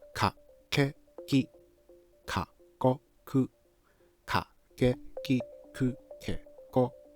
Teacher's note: Short, clear, no strong aspiration. Don't hold your breath.